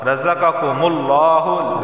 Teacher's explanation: لفظ اللہ سے پہلے میم پر پیش آیا ہے تو لفظ اللہ کو موٹا پڑھا جائے گا